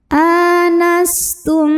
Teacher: mimi karena ada mim sukun yang menghadapi huruf mim cara bacanya mim pertama dileburkan atau dimasukkan ke mim kedua disertai dengungan jadi ini bunyinya m dan bunyi m-nya tahan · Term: idgham mimi